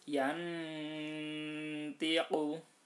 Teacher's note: nunnya dibaca terang, kemudian setelah itu disamarkan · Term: ikhfa hakiki